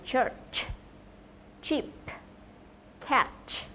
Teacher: đây là một phụ âm không kêu, voiceless consonant. Và âm này được tạo ra giữa phần mặt lưỡi trước và vòm miệng. Đây là một âm tắc sát. Khi mà phát âm ấy, thì đầu tiên chúng ta phải đặt lưỡi ở chân hàm trên và nâng cao vòm ngạc mềm lên để giữ luồng hơi trong một thời gian ngắn.